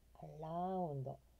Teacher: R▁の発音になるので巻き舌です